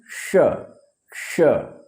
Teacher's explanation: तो श कहें, देखिए जीभ पूरा, मुंह पूरा नहीं खुला, श। मूर्धनी का कहेंगे, जीभ ऊपर ले जाएंगे